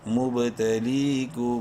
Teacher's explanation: میم ساکن کے بعد چونکہ با ہے نیکسٹ اس لیے اس میم میں غنہ کریں گے ، مبتلیکم، با زیر بھی، نون زبرنا، بینا، ہا زبر ہا،